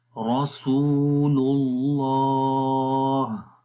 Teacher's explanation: آخر میں ہا کی آواز کو، ہا کی جو صفت ہے ہمس والی وہ آ جائے گی، رسول اللہ. لام کو لام کے ساتھ ملائیں گے تو یہ دوسرا لام اللہ کا جو نام ہے یہ موٹا پڑا جائے گا. یہاں پر آپ دیکھیں اللہ کے نام سے پہلے پیش ہے اور پیچھے جو اللہ کا نام پڑا تھا اس سے پہلے زبر تھی، تو جب اللہ کے نام سے پہلے زبر یا پھر پیش آ جائے تو اللہ کا نام موٹا پڑھتے ہیں.